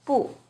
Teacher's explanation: when buu is used alone it's always the fourth tone